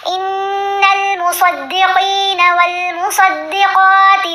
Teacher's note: صاد کو موٹا پڑا، قاف کو بھی، دونوں جگہوں پر